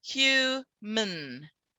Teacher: we go straight from the m to the n